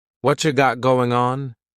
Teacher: What cha is what plus you. You becomes cha.